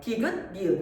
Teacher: 디귿, 니은 발음하면 같은 곳을 혀가 톡톡 건드린단 말이야. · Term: 잇몸소리